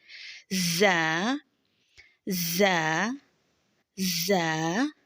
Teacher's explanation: दांतों के किनारों से मजबूती से लगेगी और बारीक भी है और सीटी वाली आवाज में भी इसको पढ़ना है दो हर्फी है एक अलिफ की मिक दार लंबा करेंगे जा · باریک بھی ہے، اور سیٹی والی آواز میں بھی اس کو پڑھنا ہے۔ دو حرفی ہے، ایک الف کی مقدار لمبا کریں گے، زا زا زا، از زا۔